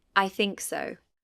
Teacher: Fall-rise intonation is used to express uncertainty, doubt, or politeness. The pitch falls, then rises.